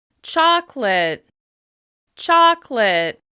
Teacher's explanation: This is a great word for practicing contrast because we have a reduced vowel in that second syllable.